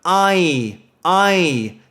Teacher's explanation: so starts as quite a nasal sound